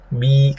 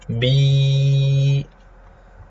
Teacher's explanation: Jadi dari pita suara bi memenuhi tenggorokan ke mulut ya. Bi, kalau kita rasakan ketika kita bicara kasrah, lidah tengah itu agak menyempit di atas bagian tengah. Nah, itulah yang membuat dia mengeluarkan suara i. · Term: ya al-maddiyah